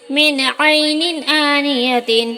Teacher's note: یہاں نون ساکن کے بعد عین حروف حلقی کے 6 حرفوں میں سے ہے، اس لیے نون کو ظاہر کر کے بلا غنہ کے جلدی پڑھیں گے. یہاں دو زیر کی تنوین کے بعد حروف حلقی کے 6 حرفوں میں سے حمزہ آیا ہے، اس لیے تنوین کو ظاہر کر کے بلا غنہ کے جلدی پڑھیں گے.